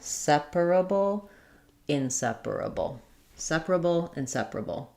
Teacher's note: inseparable is stressed on the se syllable. The IPA is in seeperable with our salabic uh L there.